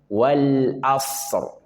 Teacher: ada shad sukun dan ra sukun, maka masing-masing punya hak setengah huruf tanpa kehilangan sifat dia. Sad punya sifat rakhah, alirkan.